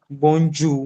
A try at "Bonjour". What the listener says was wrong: Yeah, you don't have to say bon. You don't have to pronounce it separately. It'll just be together. Bonjour.